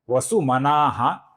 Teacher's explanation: इस विसर्ग का भी आगे ह आने के कारण लोप हुआ है। इसलिए यह विसर्ग भी आपको नहीं दिख रहा है।